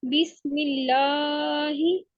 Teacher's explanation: मीम की आवाज हम होठों से निकालेंगे और लाम को हम बारीक पढ़ेंगे।